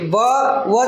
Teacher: दाताचा आणि खालच्या ओटाचा स्पर्श होते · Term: दंतष्टी